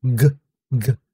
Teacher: Ang likod ng ating dila, umaangat at tumatama doon sa ngalangala or sa taas ng ating bunganga sa likod. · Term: velar